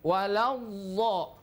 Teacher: Jangan diputus, tapi suaranya tetap mengalir karena dhad sifatnya adalah rukhawah bukan syiddah. Jadi tidak benar kalau diputus dha, tapi waladha, masih ada suaranya mengalir.